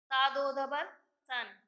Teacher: آرام سے پڑھا جائے گا. زبان کی نوک اوپر کے دانتوں سے لگے گی لیکن سیٹی کی آواز ہرگز نہیں نکلے گی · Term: بغیر سیٹی کا حرف